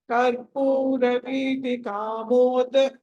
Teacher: break చేసినప్పుడైనా సరే దా దీర్ఘం రాకూడదు